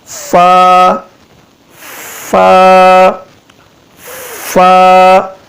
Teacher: اوپر والے دانتوں کا سرا جو ہے نیچے والے ہونٹ کے بالکل درمیان میں لگانے سے یہ فا ادا ہوتا ہے. نیچے والے ہونٹوں کے اوپر والے دانت رکھ دیں تو یہ فا ادا ہوگا.